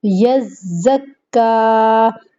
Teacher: یز سختی کے ساتھ، مضبوطی کے ساتھ، یزکا، دانتوں کو بند کرتے ہوئے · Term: زا